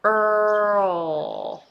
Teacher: So instead of going Earl, you don't bring the tongue up, you just lift your back of the tongue a little bit and then pronounce L sound there. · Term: dark L